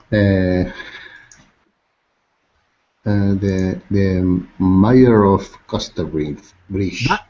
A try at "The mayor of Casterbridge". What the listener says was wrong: Not my, but May.